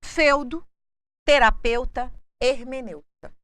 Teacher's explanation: mas o ditongo eu é sempre fechado